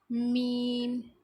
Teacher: بند ہونٹوں کا جب خشک حصے سے یہ ادا ہوتا ہے میم